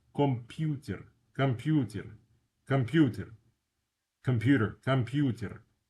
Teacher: First O is unstressed. The U is stressed.